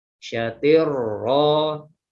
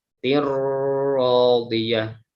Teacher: ini juga punya si idgham bila gunnah ya, jadi tidak didengungkan